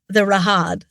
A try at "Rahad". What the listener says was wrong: Too much emphasis on the first syllable.